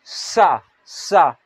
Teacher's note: मुख से हवा बाहर निकलता है और सिटी की तरफ निकलता है